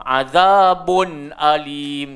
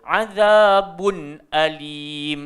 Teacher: Cuma saya yakin ramai orang boleh baca, tapi kadang-kala sebutannya tak tepat. Jadi point dia bunyi mesti bun, dia bukan bunyi bon.